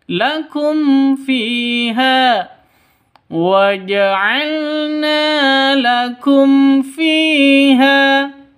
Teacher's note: Fi panjang dua ketukan. Kenapa? Karena ada ya mati diawali dengan kasroh mad asli.